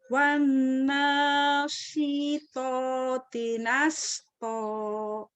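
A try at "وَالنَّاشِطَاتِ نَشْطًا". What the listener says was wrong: Iya, masih kurang ya shinnya ya. Wana syilpoti nashto. Sambil bercermin, samakan mulutnya dengan saya. Nashto.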